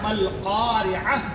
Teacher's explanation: وہ جو گول تا ہے وہ ہائے ساکنہ سے بدل جاتی ہے